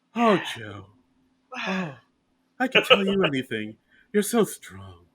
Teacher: She kind of talks in like a breathy whisper a lot.